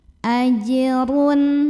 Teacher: ada huruf qalqalah yaitu jim yang sukunnya asli dan ada di tengah bacaan, maka dibacanya dipantulkan dengan pantulan yang kecil. Ajrun. Kemudian ro-nya dibunyikan secara tafkhim karena ro-nya berbaris dhammah tanwin, maka bacanya ditebalkan, pangkal lidah dinaikkan.